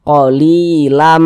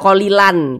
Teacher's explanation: bunyi tanwin dimasukkan ke huruf mim dileburkan ke huruf mim kita baca qolilam Jangan dibaca qolilan tapi lamah dimasukkan ke huruf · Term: idgham Bi ghunah, idgham bi gunnah